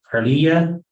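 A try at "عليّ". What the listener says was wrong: You're adding the e sound, but no, it shouldn't be it shouldn't be Alayya.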